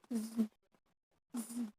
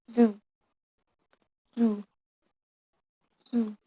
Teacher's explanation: Z sound is fricative voice on alveolar coronal place.